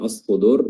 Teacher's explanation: ketika alif lam ini bertemu dengan huruf shad, maka diidghamkan langsung masuk ke huruf shad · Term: alif lam asy-syamsiyah